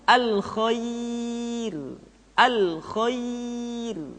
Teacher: ra dibaca dengan tipis ketika didahului oleh huruf ya yang sukun